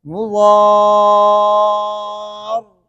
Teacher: بس اتنا خود محسوس ہوا کہ اس میں صفت تکرار ادا ہوا۔ اس کی وجہ ہے کہ صفت تکرار صفات لازمہ میں سے، اس کا مطلب یہ نہیں کہ صفت تکرار بالکل نہیں ہے اس کے اندر، صفت تقریر اس کے اندر ہے، لیکن وہ صفت اتنی ہے کہ آپ کو خود محسوس ہو۔